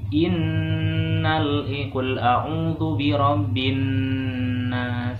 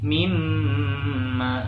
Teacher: Nah, hukum gunah itu ada dua ya hurufnya. Ada nun dan mim yang bertasdid. Ingat, bacanya harus ditahan.